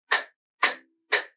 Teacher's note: You probably learned to pronounce the K sound like this, k, k, k, with an audible puff of air that comes out as you say the sound when the back of the tongue releases from the soft palate. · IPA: /k/